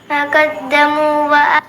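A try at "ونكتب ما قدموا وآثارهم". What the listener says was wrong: വനക്തുബ് അവിടെ ബാ കേട്ടിട്ടില്ല. എന്താ അവിടെ ശ്വാസം വലിക്കാൻ നിന്ന്? ഇന്നാ നഹ്നു നുഹ്യിൽ മൗത വനക്തുബു മാ ഖദ്ദമു വആസാറഹും അങ്ങനെ ഓതണം.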